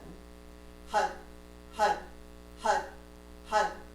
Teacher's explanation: it's spelled har but you roll the R so it sounds more like a D